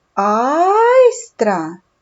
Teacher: два склади тому що є два голосних звуки айстра це айстра наголос падає на перший склад на звук а